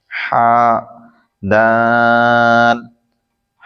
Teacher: ہا حلق کے درمیان سے ادا ہوتا ہے